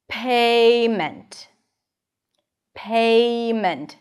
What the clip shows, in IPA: peɪ.mənt